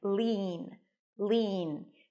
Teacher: the end is an l sound a high e and an N